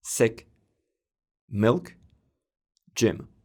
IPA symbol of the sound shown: ɪ